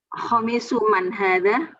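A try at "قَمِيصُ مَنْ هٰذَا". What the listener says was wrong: Oh, pakai qaf ya. Qamisu man hadza.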